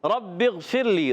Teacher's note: غین کو ہلائیں گے نہیں مگر غین کو موٹا کریں گے، موٹا پڑھنا ہے کیونکہ عرف مستعلیہ میں سے رب اغفر میں با کو غین سے ملائیں گے، غین عرف مستعلیہ میں سے غین کو موٹا بھی رکھنا ہے، غین کو ہلائیں گے نہیں۔